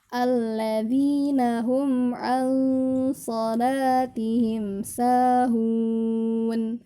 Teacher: kalau nun sukun bertemu dengan so, ditahan dulu selama 3 harokat dan diarahkan kepada makhraj huruf so. Tadi ya sama ya, huruf so itu di ujung lidah kita diarahkan ke gigi bagian bawah, bagian depan. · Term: ikhfa